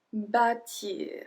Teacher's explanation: because of the accent circonflexe on the A, we pronounce it a bit longer.